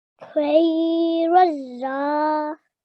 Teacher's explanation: in between we've got one blank alif and one blank lam, and that's going to drop. Razza.